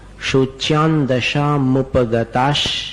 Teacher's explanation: शोच्यान दशा, अनुस्वार का उच्चारण न के समान